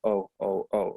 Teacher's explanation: it's like an o shaped is round and the um the tongue is low in the mouth